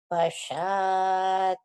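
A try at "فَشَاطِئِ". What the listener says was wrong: Bukan hi, Ibu. Itu hamzah, bukan ha. Ayo, salah. Ayo, salah.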